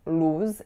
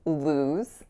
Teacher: In the word lose, we have that diphthongized moving oo sound. So it's not like a pure oo. It's not lose, it's lose.